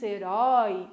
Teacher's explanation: quando a gente diz herói, a boca fica aberta, isso é um ditongo aberto